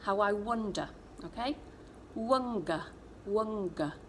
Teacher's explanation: sounds can be tricky to make with a dummy in and you get what we call backing where the back of your tongue is doing the work